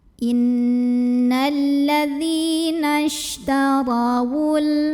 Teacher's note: Ra dibaca secara tafkhim karena ra ini berbaris fathah, barisnya di atas. Jadi cara bacanya ra-nya dibunyikan dengan menebalkannya. Pangkal lidah kita dinaikkan.